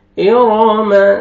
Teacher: इरम, रो की फतहा, रो को मोटा करके पढ़ेंगे।